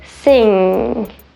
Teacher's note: only time where you don't really hear the g at all you're holding your tongue back for the ang and you're not really releasing it or pronouncing that g at all